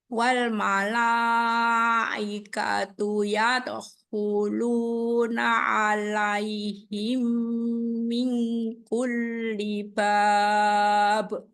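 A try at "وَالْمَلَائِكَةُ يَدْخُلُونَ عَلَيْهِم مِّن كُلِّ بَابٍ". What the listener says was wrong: Nah, dengungnya 3 harokat tadi kurang. Antara ya dengan huluna. Disambung ya qalqalahnya. Ya dahuluna. Ya, jangan putus. Jangan ya dahuluna. Itu terputus.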